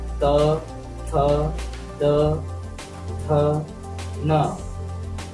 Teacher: जब हम उच्चारण कर रहे हैं तो हमारी जीभ जो है सामने वाले दांत से स्पर्श कर रहा है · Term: त वर्ग